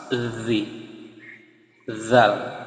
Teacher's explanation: Jadi dia posisinya seperti mau menggigit lidah. Jadi kita lidah keluarkan, kemudian seperti mau menggigit sambil dihembuskan nafas